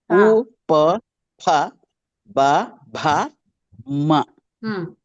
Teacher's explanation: only lips కలుస్తాయి కాబట్టి కదులుతాయి కాబట్టి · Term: ఔష్ట స్థాన వర్ణాలు